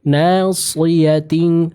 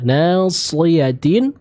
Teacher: shad tebalkan, jangan sampai tertukar dengan huruf sin